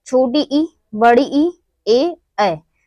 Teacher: जिन स्वरों का उच्चारण में जीवा का अग्रभाग सक्रिय रहता है उन्हें अग्रस्वर कहते हैं